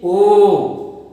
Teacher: हमारा कंठ से आवाज आ रही है और ओष्ठ स्पर्श कर रहा है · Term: कंठोष्ठ वर्ण